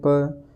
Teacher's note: इसका ओष्ठ स्थान और स्पष्ट प्रयत्न दोनों ओष्ठों को मिलाकर बोलना